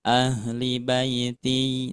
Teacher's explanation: dari ahlinya linya jangan dipanjangin